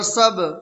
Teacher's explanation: با حروف قلقلہ میں سے ہے اور با کے اوپر جزم ہے تو اس میں قلقلہ ہوگا